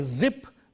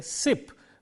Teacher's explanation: The difference between these two words is only in the voicing. When we say zip, the z sound is voiced. When we say sip, the s sound is voiceless.